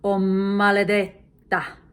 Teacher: When you want to give special emphasis to a word, you double the first consonant, even though it's not doubled in writing.